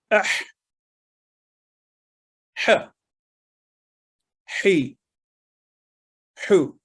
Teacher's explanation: یہ بہت جگہوں پہ قرآن کریم میں ہا اور ہا کا جو فرق ہے یہ ہمیں کرنا اور اس سے نکھار آتا ہے تلاوت میں، اور یہ حروف حلقیہ میں سے ہیں. ہا جو ہے حلق کے درمیانی حصے سے یہ حرف ادا ہوتا ہے اور اس کی آواز حلق سے رگڑ کھا کر نکلتی ہے اور ہلکی ہوا منہ سے نکلتی ہوئی محسوس ہوتی ہے اور ہمیشہ باریک آواز میں ادا ہوتا ہے.